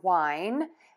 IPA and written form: waɪn (WINE)